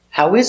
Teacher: Intonation goes up on is.